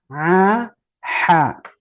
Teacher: berikutnya yang keluar dari tengah tenggorokan ya wasatul halq yaitu Ain dan Ha